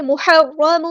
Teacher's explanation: ہا کو مستحلق middle throat سے ادا کرنا ہے، را مشدد ہے تو اس کو جماؤ کے ساتھ اسٹرینتھ کے ساتھ ادا کرنا ہے اور یہ پورا ادا ہوگا.